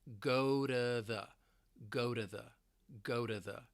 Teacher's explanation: And once again with the American accent because I'm from the US, I'm going to pronounce it as a flap t. So it's going to sound like go to the go to the go to the.